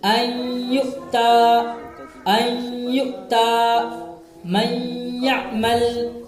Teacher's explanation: نون ساکن کو یا سے ملا کر غنہ کے ساتھ پڑھیں گے